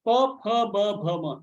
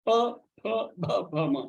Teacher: These are all sounds coming out of only your lips. Tongue has no role to play there.